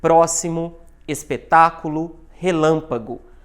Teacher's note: Sílaba tônica é a antepenúltima. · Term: Proparoxítona